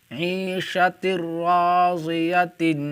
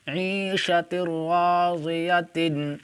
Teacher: یہاں پر دیکھیں تنوین کے بعد حرف یرملون میں سے را آ رہا ہے، اس لیے تنوین کو را سے ملا کر بغیر گنہ کے پڑھیں گے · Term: ادغام بلا گنہ